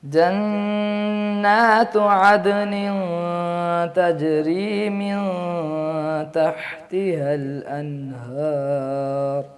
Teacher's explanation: عدن پہ قلقلہ بھی ہے دال پہ, اور نون کو بھی ظاہر کرنا ہے